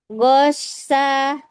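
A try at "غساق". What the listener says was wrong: Ghossa. Ya, catatannya masih pada harfu ghain ya, masih belibet di makhraj ya. menempatkan makhrajnya itu lidahnya masih bingung gitu. Berarti belum sinkron di sini ya. Nanti latihannya bisa dilatih lidahnya ya.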